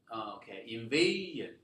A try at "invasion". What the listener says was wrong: No, it's not invasion. It's invasion. not stressed on the third syllable. Stressed on the second syllable. Here, la la la. So invasion.